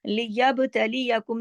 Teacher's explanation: لیبتلیکم جو ورڈ ہے اس کے اندر با پہ کلکلا ہو رہا ہے